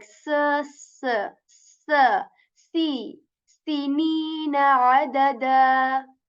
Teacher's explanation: So there comes the sin letter, which has like, whistle sound in it with a bit more air